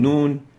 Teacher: its nasal tone so it's also classified as a nasal letter so it's a combination of two articulation points coming together lingual and nasal and as we pronounce the noon we have a lingual articulation